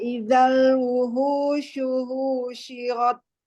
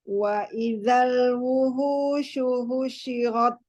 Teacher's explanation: Ulangi, hu-nya nggak usah panjang.